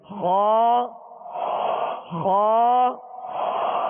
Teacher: اس کا مخرج مخارج کی لسٹ میں آپ دیکھ لیجئے، حلق کے اوپر والے حصے سے ادا ہوتا ہے. حلق کے اوپر والے حصے، یہ اوپر سے مراد یہ ہے کہ یہ منہ کی جانب جو حصہ ہے، یہ وہ حلق کا اوپر والا حصہ جو منہ کی جانب ہے، جو منہ کی جانب ہے. · خا کو پر کرتے ہوئے جڑ زبان کو آپ اوپر اٹھائیں گے تو خا ادا ہوگا، یعنی خا پر پڑھا جائے گا.